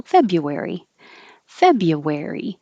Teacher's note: february we just drop the r completely you can say feb u or fabian is shorter and easier